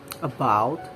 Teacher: the central vowel which is called schwa is a very familiar sound in english it is heard in first syllable of other words about a